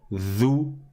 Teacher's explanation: Zou, j'ai pas sorti ma langue.